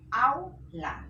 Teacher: Vocal abierta, la A, y vocal cerrada, la U. Tienen que unirse. Au, la. Entonces acá también se está produciendo diptongo.